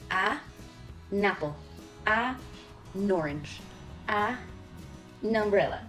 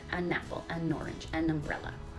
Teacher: you divide the A and the n and you move the N to the noun that starts with a vowel